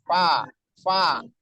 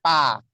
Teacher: Fa itu pertemuan dari perut bibir bawah atau bibir bawah bagian dalam dengan ujung-ujung gigi seri atas kita.